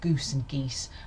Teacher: You can even be unrounded, goose can be unrounded, and in fact I've heard so much fronting with this that it sounds more like, well, goose and geese hardly sound any different